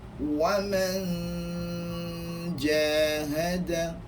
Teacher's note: Ketika lontaran dengung, maka kebanyakan suara dari rongga hidung, kebanyakan suara keluar daripada rongga hidung, tetapi hanya sedikit sahaja yang keluar daripada mulut, dan lidah pula sangat hampir dengan makhraj huruf selepas daripada nun.